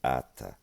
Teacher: it would not be a voiceless dental fricative, but a voiceless dental stop because of gemination